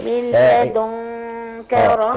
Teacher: يعني ادغام بس بدون غنه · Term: ادغام بس بدون غنى